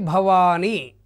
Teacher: భ లఘువు అవుతుంది వా దీర్ఘం ఉంది కాబట్టి గురువు అవుతుంది ని లఘువు అవుతుంది